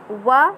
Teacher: व दंतोष्ठ ध्वनि, दांत और ओष्ठ के मिश्रण से इसकी आवाज़ बाहर निकलती है, इसलिए इसे दंतोष्ठ ध्वनि कहते हैं।